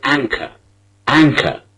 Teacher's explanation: the final r in the word is not pronounced